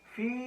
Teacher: یا ساکن سے پہلے یہاں پر ہمیں زیر مل رہی ہے، اسی لیے ہم یہاں پر یائے مدہ کریں گے